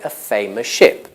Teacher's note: Well, it is still English, but native speakers are likely to say a famous ship because they make the sound s on the end of famous similar or the same as the sound sh at the beginning of ship.